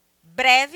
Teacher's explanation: essa palavra breve é uma palavra de duas sílabas mas a mais forte é o bré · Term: paroxítona